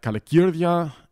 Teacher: the stress falls on the cir syllable because it's followed by two consonants